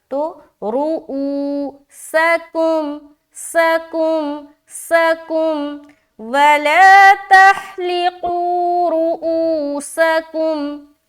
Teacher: را کو موٹا رکھیں گے، جلد ادا کریں گے، اور او میں کھینچیں گے کیونکہ واو ساکن سے پہلے پیش ہے، واو مدہ ہو رہا، تو رؤوسکم، سکم، سکم، وَلَا تَحْلِقُوا رُؤُوسَكُمْ۔